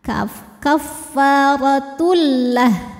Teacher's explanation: Kaffaratul Tul ada idgham bila gunnah karena ada tanwin dhammah menghadapi lam, maka tanwin dileburkan ke lam, tidak disertai dengung, cukup ditekan. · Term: Idam bilunah